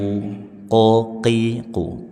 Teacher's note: qo qi qu pangkal lidah bagian atas